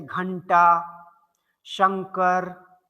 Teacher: दूसरे अक्षर पर न की ध्वनि आए, नासिका से जुड़ा हुआ ध्वनि हो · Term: अनुस्वार